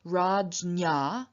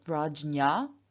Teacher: the dental n turns into a palatal n after the palatal stop j